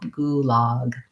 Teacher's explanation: gulag has a tense u and the open ah